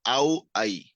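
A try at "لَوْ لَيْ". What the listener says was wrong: না, এটা হলো লাম। আমরা আগেই বলেছি, আলিফের পরে এখানে আলিফের সাথে কোনো শব্দ যুক্ত হয় না। হ্যাঁ, এটা হলো লাউ লাই। আরেকটা বিষয় হলো লিনের হরফ কিন্তু টান ছাড়া দ্রুতই পড়তে হয়। হ্যাঁ, এই যে দেখেন, লিনের হরফ টান ছাড়া দ্রুত পড়তে হয়।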